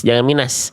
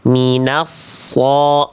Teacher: Kalau tadi pangkal lidahnya kerasa tebal ketika harokat aja, tapi ketika dia menyentuh ke es, bunyi sukun atau bunyi permulaan tasdid sodnya masih tipis, minas, jangan minas. Minas so, udah naik pangkal lidahnya.